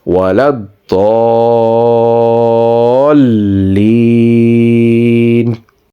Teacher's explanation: pronounce this so clearly that the person listening can clearly tell first there was a big madda and then there is a shadda